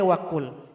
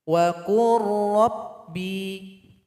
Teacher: Jadi qaf ini langsung diloncatkan kepada huruf ra karena lam telah bergabung dengan ra di sini. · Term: idgham mutaqaribain